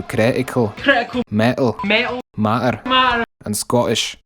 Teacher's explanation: As it is with many dialects of British English, T's after vowels and at the end of words are dropped frequently